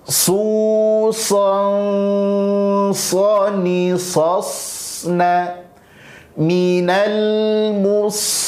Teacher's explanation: Dan tanwin ketemu sa huruf tebal, ikhfa, maka dengungnya ditebalkan karena sa huruf tebal.